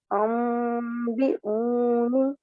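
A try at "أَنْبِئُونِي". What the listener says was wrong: अम्बिऊनी, ठीक है, ये यामद है ना, तो इसको 2 सेकंड के लिए इसको भी लंबा करेंगे।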